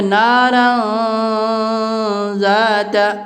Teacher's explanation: 2 زبر کی تنوین کے بعد حروف اخفا کے 15 حرفوں میں سے زال ہے، اس لیے یہاں اخفا کا قاعدہ ہوگا